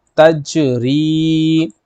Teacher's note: اور دوسری بات یہ ہے قاعدہ، دوسرا قاعدہ یہاں پر یہ ہے کہ یا ساکن سے پہلے زیر ہو تو یا مدہ والی ہوتی ہے، اس کو کھینچ کے پڑھیں گے